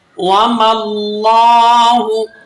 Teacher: واو زبر وا میم لام زبر مل لام کھڑا زبر لا ہا پیش ہو. اب یہاں لفظ اللہ کی لام ہے اسے آپ نے مفخم یعنی موٹا کر کے پڑھنا ہے